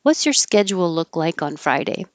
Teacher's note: It looks like a D and a U, and that creates a J.